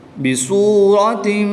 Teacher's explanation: اب یہاں پر وقف نہیں ہے، ہم نے سانس کی وجہ سے وقف کیا یہاں پر، تو جب اس در وقف کریں گے تو گول تا کو ہا ساکنہ سے بدل دیں گے